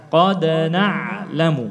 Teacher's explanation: Kita menjelaskan dal ini yang suaranya tertahan, udaranya tertahan dengan qalqalah.